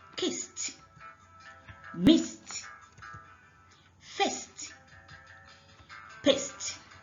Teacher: Another voiceless consonant. If we add ed to each one, it will sound t.